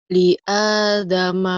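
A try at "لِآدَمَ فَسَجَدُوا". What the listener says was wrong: Dalnya keras. Da-nya keras.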